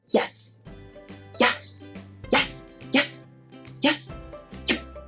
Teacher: Some linguists theorized that when people said yes with a lot of excitement they would close their mouth so energetically, that this plosive p would be made